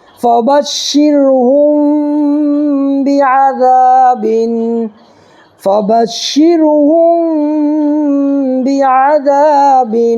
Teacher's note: دیکھیے یہ را ساکنی سے پہلے زبر یا پیش تو ہم لوگوں نے قاعدہ پڑھا تھا نا کہ را ساکنی سے پہلے زبر یا پیش ہو تو را پر ہوگی، اور اگر زیر ہو تو باریک. تو را ساکنی سے پہلے دیکھو شین کے نیچے زیر ہے تو یہاں پر باریک پڑھنا ہے. میم ساکن کے بعد با آئے تو گنہ کے ساتھ اخفا ہوگا، یہاں پر گنہ کے ساتھ اخفا کر کے پڑھیں گے.